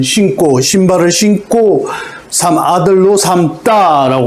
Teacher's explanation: 니은, 미음 뒤에는 예사 소리를 된소리로 발음한다.